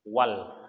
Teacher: Jadi atau lam alif lam qamariyah, atau disebut dengan izhar qamariyah, artinya izhar jelas, lamnya dibaca jelas